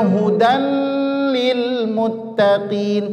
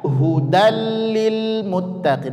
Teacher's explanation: tanwin ketemu huruf lam jadi dia tidak ada dengung Jangan dibaca Hudan Lil Muttaqin tidak tapi dibaca hudil Muttaqin langsung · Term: idgham bila ghunah